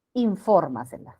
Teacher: Sobre esdrújula, llamada también superproparoxítona. El acento recae en la trasantepenúltima sílaba.